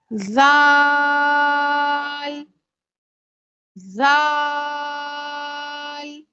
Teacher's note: जाल का मखरज ये है कि ज़बान की नोक जब ऊपर और नीचे के दांतों के दरमियान दबती है तो जाल अदा होता है। और जाल को नरमी से बारीक पढ़ें।